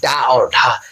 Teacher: उच्चारण करते समय हमारी जीभ एक झटके के साथ नीचे की तरफ आती है। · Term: उत्पक्ष व्यंजन